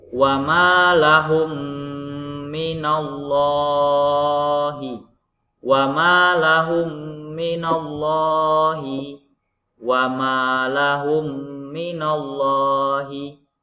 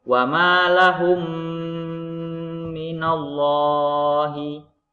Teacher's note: mim sukun berhadapan dengan mim hidup, maka dibaca berdengung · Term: idgham mimi